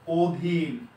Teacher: তাহলে দেখেন, এই যে ওটা ও এর, অটা ও এর মতো উচ্চারণ হচ্ছে, এটা হলো অ এর সংবৃত উচ্চারণ